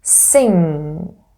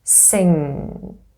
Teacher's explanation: It's the back of the tongue that rises and touches the soft palate. And this is how the airflow is blocked. · the tip of the tongue is not involved in the formation of the sound. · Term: velar nasal, voiced velar nasal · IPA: /ŋ/